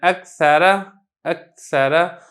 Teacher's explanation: اب تھوڑی سی آواز کے اندر جنبش ہے لیکن ہا کی آواز نہ آئے، ہا کی بو نہ آئے، ثا کی بو نہ آئے، سین کی بو نہ آئے، اس چیز کا آپ نے خیال رکھنا ہے۔